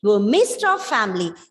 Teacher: in this small phrase, we are highlighting or stressing only the two words, missed and family